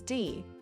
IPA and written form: ði (the)